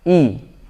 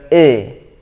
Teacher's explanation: Pertama-tama di ayat ke-6 ini, ya, huruf yang kita harus perhatikan, huruf hamzah di awalnya yang berharokat kasroh. I dibaca betul-betul kasroh, ya, sempurna kasrohnya. I bukan e, ya. Ya, secara kasroh harus sempurna I, dan juga secara makhraj, ya, harus benar-benar dari pangkal tenggorokan.